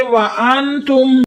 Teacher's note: میم ساکن کے بعد تا آیا تو پھر ادھر اظہار ہوگا، ہم گنہ نہیں کریں گے